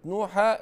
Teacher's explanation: التنوين الفتح لما بنقف عليه لابد نقلبه ألف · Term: بالألف